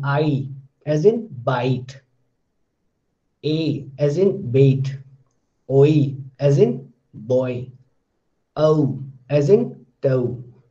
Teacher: These are 8 and these are diphthongs. So two vowel-like quality, they are coming together next to each other but in one syllable, because all these words are monosyllabic word.